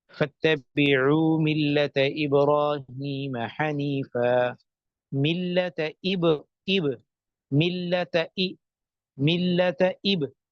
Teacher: حمزہ کے اندر ایک جھٹکا سا لگتا ہے حمزہ کی ادائیگی کے وقت